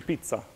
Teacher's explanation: There's almost a guttural stop in the middle